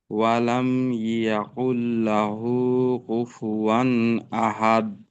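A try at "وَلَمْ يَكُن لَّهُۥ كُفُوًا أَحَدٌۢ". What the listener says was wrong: জি, ওয়ালাম ইয়াকুল লাহু, কুল কাফ, তো কাফটাকে আরেকটু হালকা, কু, ওয়ালাম ইয়াকুল লাহু কুফুয়ান আহাদ।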